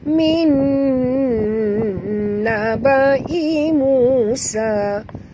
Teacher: nun mati bertemu nun, idgham ma'al gunnah. Wajib dengung.